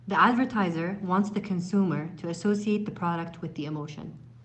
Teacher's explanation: the words in the sentences they were linked they were combined and she pronounced them with a flow there were no chopped words there were no spaces or gaps between the pronunciation parts so